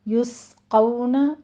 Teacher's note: یسقون من رحیق مختوم، یسقون، سین کے پر سیٹی کی آواز لے کر آئیں، یسقون حمز بھی ہوگا، ساتھ میں سیٹی کی آواز بھی آئے گی۔ قو میں قوف کو پر پڑھنا ہے، آگے واو لین ہے۔